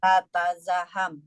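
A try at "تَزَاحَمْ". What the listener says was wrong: Taknya satu aja. Tazaham.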